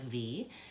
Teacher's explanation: made with the top front teeth on the bottom lip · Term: labial Dental